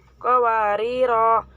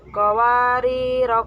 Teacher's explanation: tulisannya qawariro dibaca qawarir